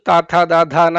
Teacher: ನಾಲ್ಗೆ ಹಲ್ಲನ್ನ ತಾಕ್ಸಿದಾಗ ಆ ಬರೀ ಸೌಂಡ್ ಇದ್ದು ತಾತ ದ ಧ ನ ಆಗಿ ಬದಲಾಗ್ಬಿಡುತ್ತೆ